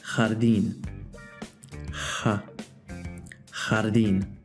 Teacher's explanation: make a longer H sound but keep it in the back of your mouth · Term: softer Jota